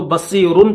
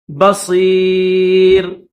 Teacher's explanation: یہاں پر ملا کر پڑھیں گے تو بصیرن پڑھیں گے، لیکن اسٹاپ کریں گے تو جزم کے ساتھ پڑھیں گے بصیر